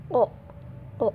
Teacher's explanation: ketika kita mengucapkan huruf o, nah itu letaknya ada di belakangnya lidah, paling belakang banget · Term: pangkal lidah